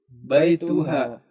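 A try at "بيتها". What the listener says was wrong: Ya, baituhanya diperjelas ya, baituha gitu. Bukan baituha ya, kayak pendek ya.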